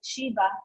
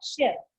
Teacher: if a word ends like Shiva with a short A, they drop the A and it becomes Shiv